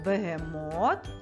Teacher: цей склад за рахунком третій він є наголошеним у слові бегемот